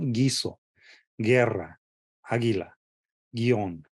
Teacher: Solo se oye el G y luego el vocal que sigue.